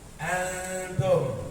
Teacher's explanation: kayak nyebut N tapi ngambang. Nyebut N tapi siap-siap nyebut ta. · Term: ikhfa